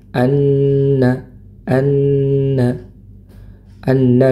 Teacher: nun bertasydid maka didengungkan